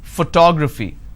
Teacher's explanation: I stress on the second syllable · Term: word stress